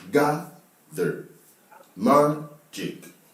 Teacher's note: for all these words, the stress is on the first syllable